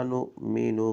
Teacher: حمزہ پر جھٹکا دے کے پڑھیں گے